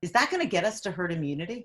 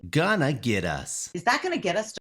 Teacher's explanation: listen to the reduction of going to to gonna